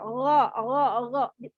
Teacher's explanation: kalau ini gha-nya dia huruf tebal dan dia berharokat fathah. Maka bibirnya datar saja.